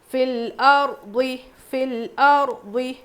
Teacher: را ساکن سے پہلے زبر، را کو موٹا پڑھیں گے